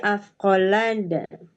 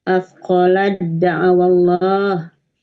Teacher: Ta sama da itu kan memang makhrajnya sama ya. Tapi sifatnya berbeda.